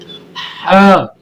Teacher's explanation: حلق سے اس کی جب آواز آئے گی ڈائریکٹ حلق سے، یعنی اس کا زبان اور تالو اس کے حساب سے یہ نہیں آئے گی، اس کی ڈائریکٹ آواز حلق سے نکل کے آئے گی، یعنی اب یہاں پہ نہ آپ کی زبان ہلی نہ آپ کے تالو کے ساتھ لگی، اس کے بغیر آپ کی آواز جو ہے نا اندر سے آ رہی ہے.